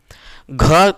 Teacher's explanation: उच्चारण स्थान क्या है घ का, कंठ है। ऑप्शन संख्या बी।